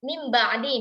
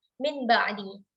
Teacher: apabila nun sukun di depannya berjumpa dengan ba, maka itu akan diganti bunyinya menjadi bunyi mim, ya, diubah bunyinya mim ba'di misalnya, tidak mereka ucapkan min ba'di.